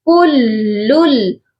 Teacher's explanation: کُلُّل، اور یہاں جو فرسٹ والا لام ہے اس پر تنوین ہے، لیکن یہاں پر غنہ نہیں کرنا، کیونکہ جب بھی تنوین کے بعد لام اور را آتا ہے تو غنہ نہیں کیا جاتا. یہاں پر صرف ہم ادغام کریں گے، یعنی بس ملائیں گے لیکن بغیر غنے کے